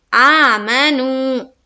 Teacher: ایک الف کے باقدر کھینچیں گے، میم کو جلد ادا کریں گے، بالکل نہیں کھینچنا ہے